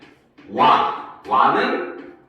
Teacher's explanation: W에서 시작해서 A로 가는 모음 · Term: W계 이중모음